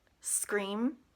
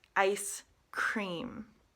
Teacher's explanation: a little bit different it sounds very similar but they're slightly the s and the K sound are slightly separate